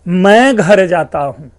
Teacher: घर शब्द पे स्ट्रेस डालने से स्वर प्रयोग से अर्थ भिन्न हो गया